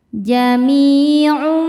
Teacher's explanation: Cara bacanya tanwin dimasukkan ke mim disertai bunyi dengung. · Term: idgham bi gunnah